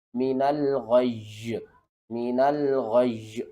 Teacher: من الغی بھی پڑھ سکتے ہیں اور من الغی بھی پڑھ سکتے ہیں، ٹھیک ہے۔ لیکن جب آپ نے غی پڑھنا ہے نا تو ایک یا نہیں پڑھنا، آپ نے دو یا پڑھنے ہیں۔ کس طرح کہ جو بھی تشدید ہوتی ہے نا اس کے اندر دو حروف ہوتے ہیں، ایک ساکن ہوتا ہے ایک متحرک ہوتا ہے۔